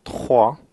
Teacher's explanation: we also have trois with aspirated R, again air passing through the throat